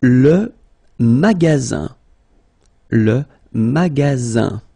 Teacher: you've got only one S between two vowels. Then you get the sound Z, alright? And then the ending here is IN, so it's nasal, it goes in your nose, and it's un.